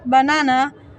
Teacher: in the word banana, the second syllable is stressed.